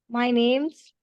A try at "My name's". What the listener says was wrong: No. आपने क्या किया? आपने पॉज ले लिया, ठीक है? सो एक लाइन में बोलो.